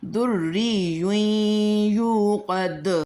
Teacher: اگر ہم وقف کرتے ہیں تو دال کی جو حرکت ہے اس کو ہم سائلنٹ کریں گے